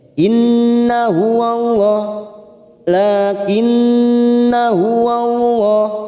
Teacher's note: huruf nun fathah yang diikuti alif, namun di atasnya terdapat tanda sifir mustatil, maka saat kita membaca terus kita baca pendek